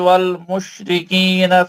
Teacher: شین پڑھے تو پھیل جانا آواز